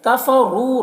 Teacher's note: یہاں پر واو مدہ ہے تو اسے بھی ایک الف کے برابر کھینچ کر پڑھیں گے